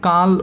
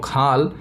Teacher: যায় ক অঘোষ অল্পপ্রাণ এবং খ হচ্ছে ঘোষ এবং মহাপ্রাণ অর্থাৎ এই ধ্বনিদ্বয়ের মধ্যে পার্থক্য হলো মহাপ্রাণতা এভাবে ধ্বনির মধ্যে অন্যান্য বৈশিষ্ট্য এক থাকে